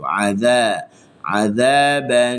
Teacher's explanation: huruf zal hujung lidah di hujung gigi atas mesti kita letak dekat situ.